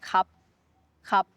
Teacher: In everyday life, Thai people, we drop the R completely if the R is in the middle of the syllable.